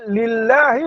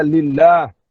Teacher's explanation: Sebelum Allah itu ada huruf lam yang berbaris di bawah. Lam Allah jika didahului dengan huruf yang berbaris di bawah, maka Allah dibaca dengan nipis. Dia panggil muraqqaqah, dinipiskan.